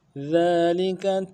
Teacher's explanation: ذالک میں ذال کے اوپر کھڑا زبر ہے، ایک الف دال کھینچیں گے، لم کو نرم سے پڑھیں گے، کاف کو بھی نرم سے پڑھیں گے۔